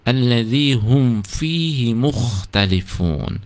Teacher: Kemudian allazi hum fi, hum ada mim sukun, hati-hati jangan sampai itu ditahan, tidak boleh dengung, tidak boleh allazi hum fi, hati-hati. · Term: idhar syafawi